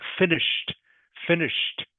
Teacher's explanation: the Ed D is pronounced just like a t